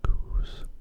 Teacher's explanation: I like to make an SH sort of sound, not quite an S, so it's not so sharp